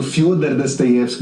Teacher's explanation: Eu estou pronunciando Fyodor Dostoiévski dessa maneira porque no russo, na língua russa, quando o O é átono, ele é pronunciado como A